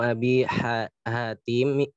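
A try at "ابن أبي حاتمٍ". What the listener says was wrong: di tanwinkan aja Hatimin. Ini bukan Bismillahirrahmanirrahim.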